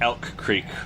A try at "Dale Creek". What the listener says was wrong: Do y'all not pronounce the D? I said Dale. It's Dale Creek. It's not Creek. It's not Creek. Dale Creek.